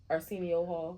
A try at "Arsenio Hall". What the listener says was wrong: Arsenio. Arsenio Hall. No, move your mouth and say it. That's his name, Arsenio Hall.